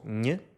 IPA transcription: ɲ